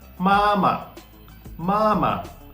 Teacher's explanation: in the second case we just spoke it okay we didn't neither our voice was Rising neither was it falling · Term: neutral tone